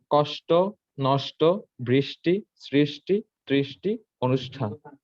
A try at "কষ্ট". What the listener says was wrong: হ্যাঁ, কষ্ট নষ্টতে লাস্টে ট, ট, ওই যে ট এর সাথে ওকার উচ্চারণ হবে, ওটা একটু ক্লিয়ার কর।